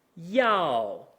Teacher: the fourth tone starts high ends low in fact it ends right about where our second tone starts